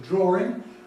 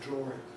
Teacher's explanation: So here I am, passing a judgment really upon the pronunciation drawing, which probably is the most frequent one in British English, certainly in English English, with an intrusive R in the middle of the word, drawing. But by having it as a raised symbol, I am saying, well, I don't recommend this, I don't require you to do it. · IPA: [ˡdrɔːrɪŋ]